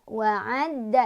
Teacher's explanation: Ditekan dalnya ada tasydidnya.